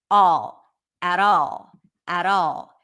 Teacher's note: You barely hear the L. That's a dark L. You don't hear it as a regular L. It sounds, it's pronounced in the back of the mouth.